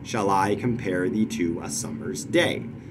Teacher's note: that's five iambic feet so it's iambic pentameter